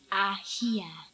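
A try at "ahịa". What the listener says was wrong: not ahia. Ahia. The tone is very important. When you say ahia, some people will say, what are you talking about? So you have to say ahia. Ahia.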